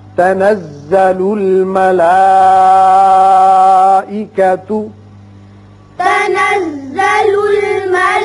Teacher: مد متصل ہے، 5 حرکات کھینچنا ہے